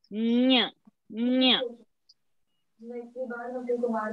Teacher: Using the palatal and the nose. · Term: Anuswara